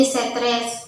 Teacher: ada epentesis penambahan bunyi untuk mempermudah pelapalan contohnya stres menjadi stres dengan penambahan vokal e untuk memudahkan artikulasi